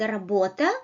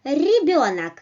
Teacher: You touch hard palates, you touch alveoles with the back of your tongue, and you produce vibration like r, r, r, rim, r, r. It may be a bit harder like r in the word работа, or it may be a bit softer like in the word ребенок, r. Well, so you don't need to put it too backwards or too forward.